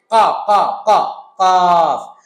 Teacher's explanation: কফের মাখরাজ হলো জিহ্বার গোড়া উপরের তালু